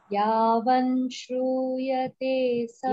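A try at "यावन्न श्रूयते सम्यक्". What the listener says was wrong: Yavanna, double na. Yavanna shruyate samyak Shrimad Bhagavatam Naraihi.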